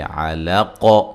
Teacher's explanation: یہاں موٹا قاف ہے اور یہاں قلقلہ کیا جائے گا وقف کی صورت میں